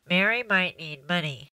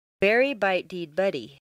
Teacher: the first will be quite nasal the second will sound like you have a cold the third will have appropriate nasal consonants but d nasalized vowels